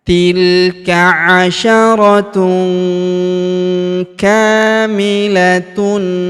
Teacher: Huruf ka kita panjangkan 2 harokat karena terdapat alif di depannya.